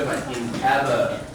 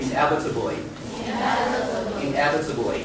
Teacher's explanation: The stress on the second syllable, so we say inevitably.